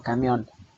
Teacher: Por ejemplo, camión termina en una N, tiene el acento o tiene la mayor intensidad de pronunciación en la última sílaba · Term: palabras agudas